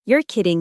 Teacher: let your voice rise at the end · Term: intonation